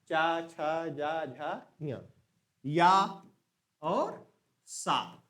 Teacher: इनका उच्चारण तालु से है, ये तालव्य है